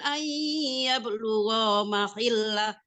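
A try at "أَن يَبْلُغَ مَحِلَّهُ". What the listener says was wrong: Nah, gua-nya apa kebanyakan sedikit. Ayyablugha mahillah.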